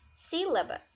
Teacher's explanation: a gente percebe que o si é a parte mais forte da palavra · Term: sílaba tônica